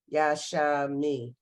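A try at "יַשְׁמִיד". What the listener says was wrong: No, it's Yashmid. It ends a syllable, doesn't begin it. It's Yashmid.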